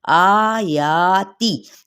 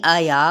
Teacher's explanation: कायम मुकाम का भी क्या मतलब है, अलिफ मद्दा यानी एक अलिफ या दो हरकत के बराबर, इन दोनों को इक्वली खींचेंगे। ये नहीं आया कर दें या फिर आयती कर दें, एक को खींच लिया दूसरे को छोड़ दिया, नहीं, ऐसा बिल्कुल नहीं करना, क्योंकि दोनों पर खड़ा ज़बर है।